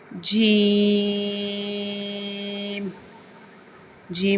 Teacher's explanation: زبان کے درمیان اور تالو کے درمیان سے ادا ہوتا ہے